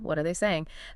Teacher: >> If you say it with a flat tone, it sounds robotic, uninterested. But to show real interest and concern, you need a sincere, slightly rising intonation